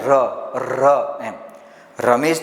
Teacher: તમે ર બોલો તો થોડી ધ્રુજારી આવે છે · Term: દંત્ય પ્રકંપી વ્યંજન